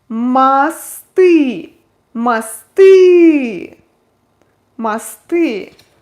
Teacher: Ü is stressed, the first O unstressed O represents A sound